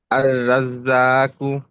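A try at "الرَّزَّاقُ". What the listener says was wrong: রা শোনা যায় এখনো।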